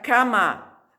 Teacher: La A en español es siempre abierta. A, abierta. No se puede cerrar, no se puede nasalizar.